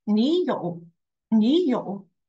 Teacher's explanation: Also, we have learned it in HSK 2 is when there are 2 words that with the same deferred tone, 你有, and when they say it together, we will pronounce only the last one as the third tone, and the first third tone we are going to change to the second